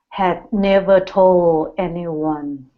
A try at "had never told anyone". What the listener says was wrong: Almost. Get that L there. Had never told. Had never told anyone.